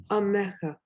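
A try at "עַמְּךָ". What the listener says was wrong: Good. Perfect. Perfect. Great.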